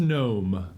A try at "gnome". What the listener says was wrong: No. Remember, the G is silent. Like lasagna.